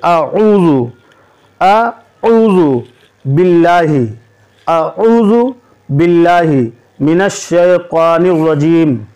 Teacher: دیکھیے، اعوذ باللہ کا عین حلق سے ادا ہوگا، پہلے ہے الف پھر ہے عین، تو الف کو آپ حلقے سے ادا کریں گے اور عین کو گہرے حلق سے ادا کریں گے